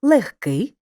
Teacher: у словах нігті кігті легко вогко дігтяр і похідних від них перед глухим приголосним пишемо г але вимовляємо х